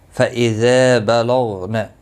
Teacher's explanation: الف مدہ ہے، ایک الف کے برابر کھینچ کر پڑھیں گے، اور غین مستعلیہ ہے، پر پڑھا جائے گا، اس کو ہلانا نہیں، باقی کسی بھی حرکت والے حرف کو کھینچنا نہیں۔